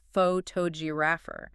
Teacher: The first o turns into a lazy uh sound.